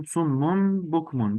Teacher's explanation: tenvinden sonra B harfinin gelmesiyle iklab görüyoruz